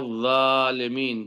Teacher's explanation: जब भी ज़ाद अदा करेंगे तो ये ज़बान का अगला हिस्सा आगे के ऊपर के जो दांत हैं उनसे मिलेगा।